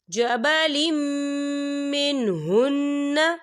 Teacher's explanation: دیکھیے جبلم لام کے نیچے تنوین ہے اور تنوین کے بعد جو ہے میم آ رہا ہے، اور میم جو ہے حروف یرملون میں سے ہے، تو یہاں پر ادغام ہوگا اور ہم اسے غننے کے ساتھ پڑھیں گے۔